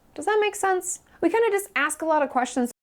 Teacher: does that gets reduced quite often, so it sounds more like one word rather than two separate words